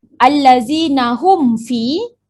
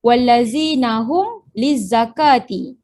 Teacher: menyatakan bunyi mim sakinah yang bertemu dengan huruf selain daripada mim dan ba yang berbaris tanpa dengung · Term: Izhar syafawi